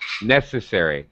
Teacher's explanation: higher pitch on the first syllable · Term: first syllable stress